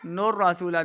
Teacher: نون کو را کے ساتھ ملانا ہے، را کے اوپر زبر، را کو پر پڑھیں ، نور رسول، سین واو پیش سو، واو مدہ ہے، واو